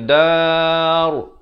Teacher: Kalau waqaf ra tu jadi tebal. Jangan baca dar.